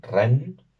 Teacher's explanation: la n al final es la larga, no la e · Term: consonante larga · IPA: / 'rɛnː /